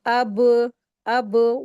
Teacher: अब अब वॉइस को बाउंस होना है। कलकला जो लेटर होता है उसकी वॉइस को बाउंस होगा